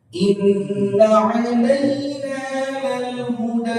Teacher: Nggak ada bacaan imalah huruf E pada kalimat alaina. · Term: huruf lin